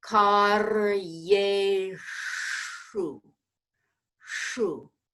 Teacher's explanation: And then in the next word, Karyeshu, that Yeshu, that Sh requires that the tip of the tongue curl to the middle of the hard palate